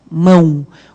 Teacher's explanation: O O não tem som de O nem de O fechado, ele tem som de U. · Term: semivogais